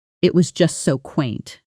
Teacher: one syllable, but native speakers often stretch it slightly when they're genuinely charmed